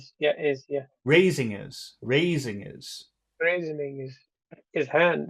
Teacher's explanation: That his just becomes is at the final part.